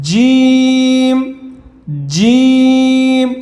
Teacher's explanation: জিম হরফটা শক্ত হবে জিহ্বার মাঝখান থেকে উপরে তালুর সাথে লাগবে